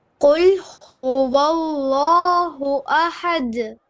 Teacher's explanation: And now you have two ha and ha. The word Allah, bottom third ha. The word ahad, middle third ha.